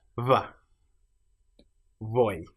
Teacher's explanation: pronounced as a physical cross between saying a B and a V, by simply having the lips close but not quite touching.